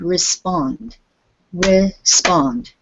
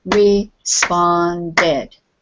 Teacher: t or d you're going to make it another syllable because when we put the id on the end that id sound it always makes one more syllable